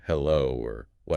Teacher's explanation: The second tone is a rising tone. It's a quick ramp up from your mid-range to your high range. It should feel like you're asking a question.